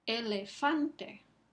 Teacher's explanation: Fan es la sílaba que recibe el énfasis aquí.